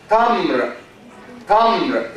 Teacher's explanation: It's purely dental. The tip of the tongue goes between the upper teeth and the lower teeth.